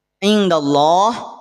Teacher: Yang tebal lafaz Allahnya. Kenapa lafaz Allah dibaca tebal? Karena didahului oleh huruf yang berharokat fathah. Maka ditafkhimkan, dibaca tebal.